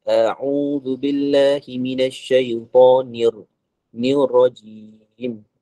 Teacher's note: Bila baca isti'azah, jangan baca ain. Jadi dia kena sebut terang dekat hamzah tu.